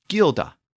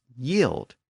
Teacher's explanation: In Old English, the G sound shifted to a Y sound in some words.